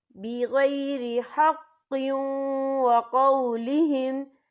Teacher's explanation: وَقَتْلِهِمُ الْأَنْبِيَاءَ بِغَيْرِ حَقٍّ وَقَوْلِهِمْ، یہ دیکھیں بِغَيْرِ حَقٍّ، قوف کے نیچے تنوین ہے، تنوین کے بعد جو ہے واو آ رہا ہے، اور واو جو ہے حروف یرملون میں سے ہے تو یہاں پر ادغام ہوگا